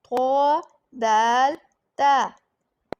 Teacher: ज़ुबान की नोक और ऊपर के दांतों की जड़ से अदा होते हैं। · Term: हरूफे नितकिया